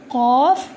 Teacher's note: یہ جو قاف ہے اس کو میں اپنے ہونٹوں کو گول کر کے ادا کرتی ہوں